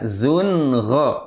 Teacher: Tanwin bertemu ghain. Harus dibaca jelas. Jangan mendengung. Ya, zun gha harus jelas. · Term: Izhar halqi